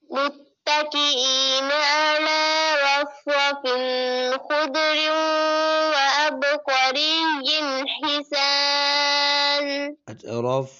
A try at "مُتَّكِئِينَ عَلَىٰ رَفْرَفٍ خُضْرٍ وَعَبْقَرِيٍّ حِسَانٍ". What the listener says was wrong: रफिन पे गुन्ना नहीं करना और दूसरा खुद कलकला नहीं करना दुआद पर मुत्तकीन अला रफरफिन खुद्रिन व अबकरिय्यिन हिसान